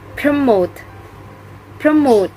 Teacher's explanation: The stress is located on the second syllable